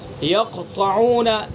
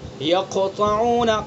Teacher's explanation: اس سے کم سکون اصلی میں، ایسا سکون جو اصلی ہے، جیسے یقطعون، یق کے جو قاف ہے اس کے اندر، اس قاف کے اوپر جو سکون ہے یہ اصلی ہے، وقفی نہیں ہے بلکہ اصلی ہے، پہلے سے سکون ہے، تو اس کے اندر تیسرے درجے کا قلقلہ ہوگا۔ یقطعون قلقلہ ہوگا لیکن تیسرے درجے کا۔